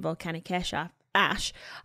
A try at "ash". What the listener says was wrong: Just for curiosity, did you pronounce ash as Esha?